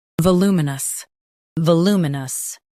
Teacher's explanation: Stress loo and keep muh-nus light.